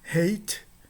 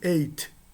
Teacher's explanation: a diferença entre elas, entre a pronúncia de uma e a pronúncia de outra, é meramente a aspiração que existe na primeira e inexiste na segunda